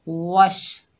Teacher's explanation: वाव के ऊपर ज़बर है, आगे शीन साकिन है, वाव को शीन से मिलाएंगे, हमज़तुल वसल मिलाने की सूरत में हज़फ हो जाएगा